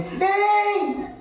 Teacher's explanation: So you can reach far. If I want to call someone very far away, hey. So pitch, I'm raising the pitch.